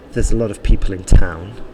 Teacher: the stress there was probably in people and in town